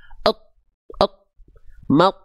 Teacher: ketika sukun itu atau kondisi mati itu keadaan makhrajnya lagi nempel. Berarti keadaan itu ujung lidah lagi nempel ke pangkal gigi atas dengan keadaan tebal. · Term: bunyi sukun